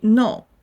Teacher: Think about how you say no when you are being very clear and decisive. Your voice comes down sharply. That strong falling movement is the fourth tone.